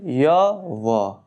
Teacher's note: इनको बोलने से मुख द्वार बहुत सकरा हो जाता है और हवा स्वर के समान मध्य से निकल जाती है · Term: अर्ध स्वर